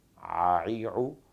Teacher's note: عین کا مخرج ہے وسط حلق، یعنی حلق کا درمیانی حصہ، یہاں سے عین کو ادا کرتے ہیں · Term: حلقیہ